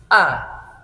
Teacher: kita supaya betul sesuai dengan kaidah tajudnya yang pertama yaitu Alif Alif yaitu keluarnya dari pangkal tenggorokan ya tenggorokan bagian paling bawah